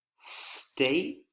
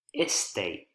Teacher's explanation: adding a vowel sound the e vowel sound as is very common in spanish